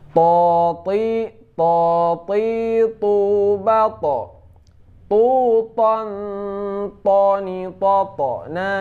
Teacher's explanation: Ini jahar juga, tidak keluar angin